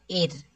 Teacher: اس را ساکن سے پہلے زیر ہے، اس کو باریک پڑھیں گے